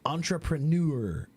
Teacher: the word entrepreneur, the accent is on the third